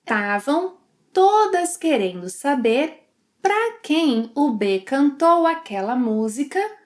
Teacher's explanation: She shortens 'estavam' to 'tavam', and 'para' to 'pra'.